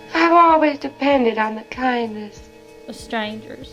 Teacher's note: You hear how there's no R in strangers? Strange. That's a non-rhotic accent.